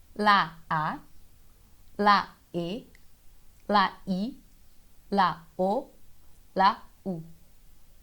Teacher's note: a gente não abre tanto a boca assim como no português para fazer as vogais é ó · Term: vogais fechadas